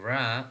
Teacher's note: And then whenever we are saying ra, also the air is coming out freely from the central part of the mouth